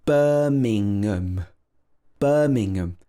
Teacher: we stress that bur the first syllable here